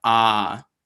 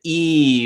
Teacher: try the ah vowel right is very very open if you try the e vowel your mouth is closed